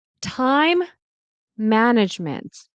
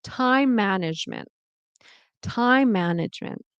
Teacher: This word ends with an an M sound. This word starts with an M sound. So, it's like you're just saying M for a longer period.